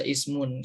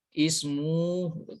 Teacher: tidak dibaca ismun seperti itu karena ada tasydid waw sih. Jadi ismu, jadi langsung disambungkan dengan waw. Ismu. Karena huruf domahtain bertemu dengan huruf waw. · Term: idgham bi gunnah